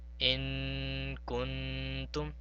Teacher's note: we have to prolong the sound of this nun sakin for 2 seconds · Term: ikhfa